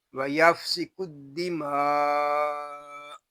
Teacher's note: وَيَفْسِكُ الدِّمَاءَ، یہاں الف اور لام یہ نہیں پڑھے جا رہے، کاف کو دال کے ساتھ ملا دیں گے، دال مشدد ہے، اس کو جماؤ کے ساتھ ادا کریں گے۔ آگے مد متصل ہوگا، اس کو ہم کھینچ کر پڑھیں گے۔